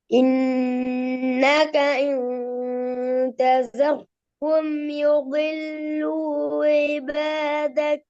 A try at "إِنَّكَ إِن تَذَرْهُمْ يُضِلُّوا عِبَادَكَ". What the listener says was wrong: ஐனை உச்சரிங்க. ஐனை தெளிவா ஊண்டி உச்சரிங்கல்லே. ஐபேதக் ஐன் ஐபேதக்